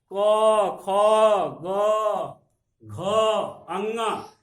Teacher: कंठ से। क, ख, ग, घ, अंग, ये आपका जो है कंठ से निकलता है, इसलिए इसको हम कंठ ध्वनि कहते हैं।